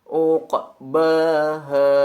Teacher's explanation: Dan pada ayat ke-15 terdapat huruf ain dan qaf pada kata di ayat terakhir uqbaha. Maka huruf ain sekali lagi ucapkan sesuai dengan makhrajnya, yaitu beri tekanan pada bagian tengah tenggorokan. Sedangkan huruf qaf bunyikan huruf qaf berharokat sukun dengan pantulan kecil karena masuk ke dalam kaidah qalqalah sugro.